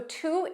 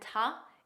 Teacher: to is the standard pronunciation and ta is the unstressed pronunciation that's commonly used by natives in natural speech